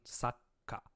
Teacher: Okay, so this tsu, the small tsu, not a full one, is taking the ka and doubling it, and kind of like sa, take a small pause as you begin the k sound, sa, k, and then ka.